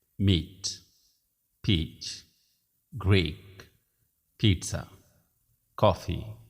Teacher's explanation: the sound e is shorter in these words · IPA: /iː/